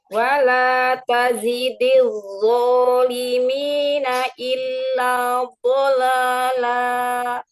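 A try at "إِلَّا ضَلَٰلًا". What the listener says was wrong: Bolala. La. Hati-hati jangan nyangkut di hamzah. Bolala.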